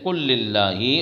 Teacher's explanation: لام فعل کا لام میں تو ادغام ہوگا اور لام فعل کا را میں تو ادغام ہوگا، لیکن را اور لام کے علاوہ اور کسی دوسرے حرف میں نہیں ہوگا۔